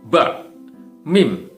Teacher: kedua bibir atas dan bawah, ya, secara bersama-sama kita pertemukan